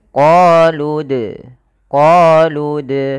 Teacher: kemudian padafal sukun di sini ada bacaan kita namakan dengan qqalah dalam pelafalannya kita harus memantulkan dalnya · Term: qalqalah